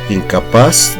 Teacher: Incapaz termina en Z, por lo tanto la sílaba tónica es paz. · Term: palabra aguda